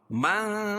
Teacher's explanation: من اخفاء حقیقی، کیونکہ نون ساکن کے بعد حروف اخفاء کے 15 حرفوں میں سے ثا ہے تو یہاں ناک میں آواز کو چھپا کر پڑھیں گے